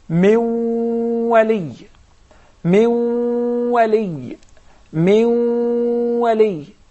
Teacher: we put or we merge the noon into the waw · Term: idgham